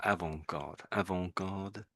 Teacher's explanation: Sort of the T is silent pretty much, but some Brits will say the T, probably because of naivety, I guess.